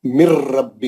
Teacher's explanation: میم کے زیر کو را سے ملائیں گے، نون بالکل چھوڑ دیں گے، اور یہ خیال کریں گے نون ادغام را کے اندر گھس گئی، ادغام کر گئی اور غائب ہو گئی. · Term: ادغام بلا غنہ